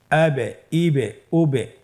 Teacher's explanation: এবে ইবে উবে এই যে আমরা হরফের শেষের দিকে একটা সাউন্ড করছি এটা একটা প্রতিধ্বনী হচ্ছে একটা ডাবল সাউন্ড হচ্ছে এটাই কলকালা উচ্চারণের সময় একটু ধাক্কা দিয়ে উচ্চারণ করলেই কলকালা হয়ে যাবে